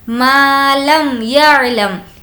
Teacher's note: یہاں پر میم کو ظاہر کر کے بالکل نارمل بغیر غنے اور بغیر اخفا کے پڑھیں گے، وہ اس لیے کہ یہاں پر اظہار شفوی کا قاعدہ ہے اور وہ یہ ہے کہ میم ساکن کے بعد با اور میم کو چھوڑ کر کوئی بھی لیٹر آ جائے تو وہاں پر اظہار شفوی ہوگا، بالکل نارمل پڑھنا ہے۔